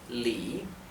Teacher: se pronuncia Li, con el tono que baja y sube, que es el llamado el tercer tono